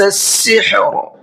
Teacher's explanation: سحر کے را کو منہ بھر کے پڑھنا ہے